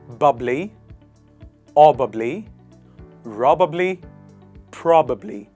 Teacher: You put the stress on the first part of the word. And you say pro.